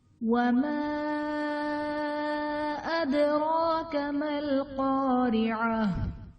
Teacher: ادراک میں دال حرف قلقلہ ساکن ہے تو یہاں پر قلقلہ خوب ظاہر ہوگا